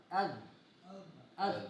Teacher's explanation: ہاں تو اب اس کے بعد تا کے بعد ہے دال، دال، اس کا مخرج بھی وہی ہے، یعنی آپ کی زبان کی نوک آپ کے اوپر والے دانتوں کے ساتھ لگے گا